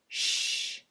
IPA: sh